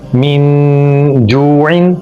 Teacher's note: من جوعن، دیکھیں نون پر غنہ کیا ہم نے اور پورا نون ہم نے ادا نہیں کیا بلکہ ناک سے آواز نکال کے غنہ کیا۔ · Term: اخفا